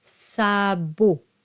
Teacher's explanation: And the O is nice and closed and rounded.